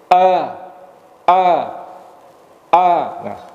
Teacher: ketika kita melafalkan a di situlah terasa bahwa memang berasal dari pangkal tenggorokan · makhrajnya ada di pangkal tenggorokan. Pangkal tenggorokan kita, yaitu yang tenggorokan paling bawah ini, di situ ada terletak dua huruf nanti, hamzah dan ha.